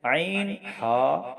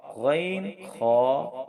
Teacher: عین حا بیچ حلق سے، غین خا اخیر حلق سے، یعنی حلق کا حصہ جو منہ کی طرف ہے اس کو اخیر حلق، شروع حلق کہتے ہیں جو پیٹ کی طرف ہے۔ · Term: حروف حلقی